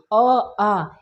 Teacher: अगर हम पहले बात करें अ आ का उच्चारण करना, तो खुद से भाव कीजिए अ आ, इसका कहाँ से हो रहा है तो हमारा डायरेक्ट कंठ से आवाज आ रहा है। तो अ आ का उच्चारण कहाँ से होता है तो हमारा कंठ से होता है